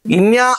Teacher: ఇప్పుడు ఈ ఇన్ అనేటువంటిది ఏమవుతుంది అని అంటే కంఠ్యానునాసికము అవుతుంది